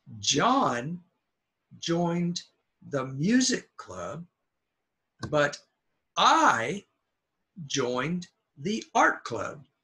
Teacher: we're stressing John and I that's a contrast